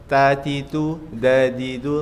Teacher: ini keluarga makhraj depan yang nempel di gigi. Ujung lidah ketemu gigi.